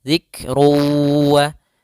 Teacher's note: Pada lafal zik ada lafaz kaf, ketika huruf kaf sukun ada sifat hamasnya dialirkan sedikit.